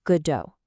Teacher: But Samuel Beckett, who wrote the play in French first, he pronounced it Godot, stressing the end